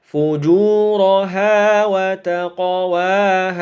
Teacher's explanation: cara membacanya pantulannya adalah pantulan yang kecil alias ringan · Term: Qalqalah kecil